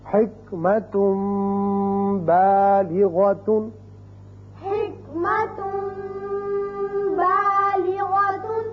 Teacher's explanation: كافر عزیز بچوں، یہاں آپ نے اقراب کا قاعدہ سمجھ لیا کہ جب بھی نون ساکن یا تنوین کے بعد حرف با آ جائے تو وہاں اقلاب کی وجہ سے ایک الف کے برابر آواز ناک کے بانسے میں ٹھہرتی ہے